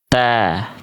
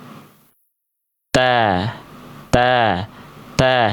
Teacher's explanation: Huruf ta dilafalkan dari ujung lidah menyentuh ke pangkal gigi seri atas.